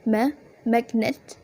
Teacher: magnet as a stem the stress is on the first syllable